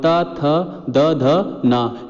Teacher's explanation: इनका उच्चारण दंत से होता है